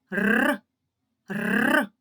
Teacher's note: наш язичок дрижить і заважає повітря виходити